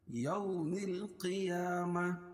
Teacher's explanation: الا کھڑا زبر قائم مقام الف مدہ کہ اس کو ایک الف کے برابر کھینچ کے پڑھیں گے. یو واولین ہے اس کو نرم آواز کے ساتھ جلدی پڑھیں گے